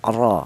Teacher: Jadi cara bacanya huruf ra yang berharakat fathah ini ditebalkan ya. Ro yaitu menggunakan ee lidah bagian belakang diangkat ke atas. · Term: tafhim, tafkhim